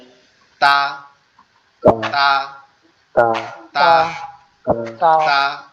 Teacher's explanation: এই তাটা আবার আমাদের যে জিহ্বা আছে, এই জিহ্বার আগা, এই উপরের যে দুইটা দাঁত, এই দুইটা দাঁতের গোড়ায় গিয়ে লাগবে, ভিতরের অংশের গোড়ায় গিয়ে লাগবে, গিয়ে উচ্চারিত হবে তা তা তা তা, এভাবে।